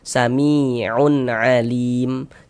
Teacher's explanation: Cara membacanya dengan dibaca jelas kemudian tidak didengungkan. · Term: izhar halqi